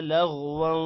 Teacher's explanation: لغواں غین موٹا ہوگا, واؤں پر غنہ ہوگا. ولا لا بھی لمبا ہوگا.